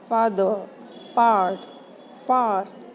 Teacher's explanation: Though we are writing father with r, but in British English we don't pronounce it as a separate r.